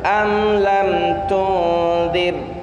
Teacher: Ra-nya jadi tipis di sana. Kenapa? Karena dia jatuh setelah kasrah.